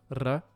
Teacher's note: is an alveolar trill, which is very marginal in actual English pronunciation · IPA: [r]